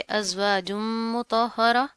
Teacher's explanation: तनवीन है, उसके बाद क्या है, हरूफ यरमलून में से मीम आ रहा है, तो यहाँ पर हम गुन्ना करेंगे, ठीक है। हा के ऊपर तशदीद आ रही है, मजबूती से पढ़ेंगे।